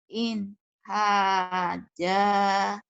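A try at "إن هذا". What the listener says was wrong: Bukan haja, itu orang Betawi. In hadza, za, jangan haja. Keras, agak keras ya. Kalau orang Sunda kadang-kadang audu terlalu keras.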